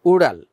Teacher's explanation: এটা বস বিন্দু রয়েছে, ড বিন্দু রটা একটু ভেতর থেকে উচ্চারণ হয় এবং জিভেটা একটু উপরের দিকে উঠে কম্পনের মতো তৈরি করে